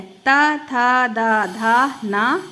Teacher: हमारी जीभ है जो वो कहाँ टच करती है? दांत को टच करके इसकी ध्वनि निकलती है।